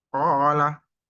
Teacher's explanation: Mat tabi'i ini dibaca dua harokat. Alif didahului fathah cirinya.